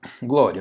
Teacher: Percebe aqui essa escala que está aumentando, a semivogal é mais baixa, depois que vem a vogal que é mais alta, está crescendo. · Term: ditongo crescente